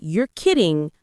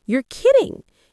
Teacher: If you say you're kidding flat, it's neutral. With rising intonation, you're kidding. It shows surprise